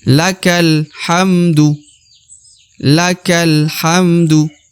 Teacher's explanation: lakal yang langsung huruf kaf langsung masuk ke huruf lam ya. Jadi alif tidak dibaca ya.